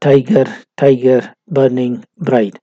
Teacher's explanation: So it is a tetrameter line, and in this tetrameter line, the first syllable tie is stressed, while in burning it is ba, which is stressed, ba, and in bright it is the whole of it is stressed. · First comes the stressed, and then comes the unstressed. But it is like iambus in having two syllables. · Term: trochee